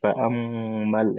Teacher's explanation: এখানে মিম তাসদীদ ওয়াজিব গুণা হবে